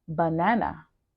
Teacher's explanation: banana has three vowels but not every vowel is schwa only the first vowel